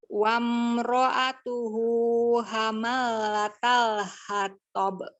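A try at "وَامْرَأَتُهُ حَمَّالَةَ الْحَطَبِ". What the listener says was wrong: Oke, haknya lulus, mimnya bertasydid ini harus dengung. Hamma, ya. Oke, hamma, ada alifnya kan? Jadi mimnya panjang.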